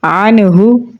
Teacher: نون ساکن کے بعد ہا ہے تو یہاں پر ہم اظہار کر کے پڑھیں گے